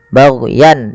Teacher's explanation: Dimana kemudian lafal yan di sini ada izhar halqi, yaitu suara tanwinnya dibaca dengan jelas karena bertemu dengan hamzah